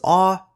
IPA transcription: ɔː